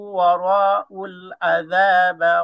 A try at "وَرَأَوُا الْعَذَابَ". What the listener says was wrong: ওয়ারাআউল সগত ভাই ওয়ারাআউল এখানে জবরের পরে কিন্তু আলিফ না এখানে জবর পরে হামজা সো নো মা ওকে হামজা উচ্চারণ হবে ওয়ারাআউল আযাব আউল আউল আউল ওয়াও দি আউল